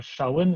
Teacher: на севере читается как [с], на юге [ш]